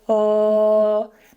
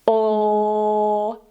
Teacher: the back of the tongue is down and it's more relaxed, it sounds like 'elllll' but when we raise it it becomes: 'olll' - and that's the 'Dark L'. Keep in mind that some